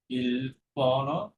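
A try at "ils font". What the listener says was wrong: শেষের উচ্চারণটা হচ্ছে ফ্যান, একার দিয়ে বলেন। শেষের উচ্চারণটা ফ্যান, একার, ফ্যান। ফ্যান, ইল ফ্যান, এল ফ্যান।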